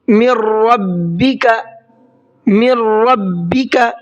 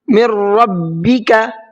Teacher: मिर रब्बिका, मिर रब्बिका, यहाँ पर देखिए मिर रब्बिका किस तरीके से लिखा हुआ है। यहाँ पर नून साकिन है और उसके बाद में रा है, लेकिन हमने नून को नहीं पढ़ा है। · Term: इदगाम